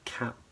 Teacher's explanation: so it's a wider a sound